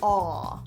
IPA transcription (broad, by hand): ɔ